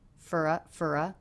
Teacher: reduced the vowel in the word for to the schwa